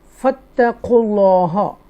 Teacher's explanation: اللہ کے نام سے پہلے پیش ہے تو اس لیے بولڈ پڑھیں گے تفخیم کے ساتھ اور اظہار شفوی ہوگا یہاں پر اور یہاں پر مد عارض لگے گا.